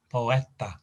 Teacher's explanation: stress on the e in the middle